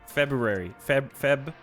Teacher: I actually do pronounce the r in February